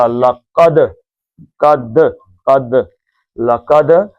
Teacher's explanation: لام پتلا، کاف موٹا، دال کا قلقلہ